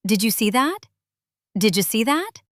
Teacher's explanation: The D and Y combine to make a J sound.